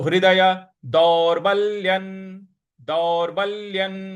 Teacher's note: हमको थोड़ा सा बल लगाना है और उसके बाद जो दौरबल्य जो आधा ल है उस पर भी हमको थोड़ा सा बल लगाना है